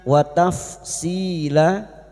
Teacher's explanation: Fathah tanwin yang dibaca waqaf selain tak marbuta namanya mad iwad. 2 harokat kita panjangkan, tidak boleh lebih, tidak boleh kurang.